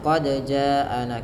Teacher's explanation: Panjangkan bunyi huruf ja sepanjang empat atau lima harakat. Karena pada lafal jaana ada bacaan mad wajib muttasir yang terjadi ketika mad thabi'i bertemu dengan hamzah.